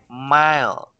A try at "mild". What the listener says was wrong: Okay, with the sound of a D on the end. Mild.